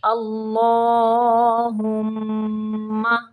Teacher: اللہم، اللہ کا لام پر پڑھیں گے، اللہم، میم مشدد پہ غنہ ہوگا